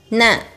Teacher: While pronouncing it, your tip of the tongue touches the back of your teeth.